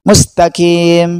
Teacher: Kesalahan yang ketiga yaitu membaca mustaqim dibaca mustaqim. Huruf qaf berubah menjadi kaf.